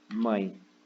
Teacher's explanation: o E, ele está representando o fonema I, na verdade. Isso tem som de I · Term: semivogal